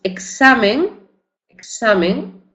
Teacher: entre vocales o en final de palabra representa el grupo consonántico ks o GS en pronunciación mucho más relajada